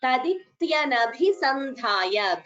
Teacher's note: bha and dha are mahapranaha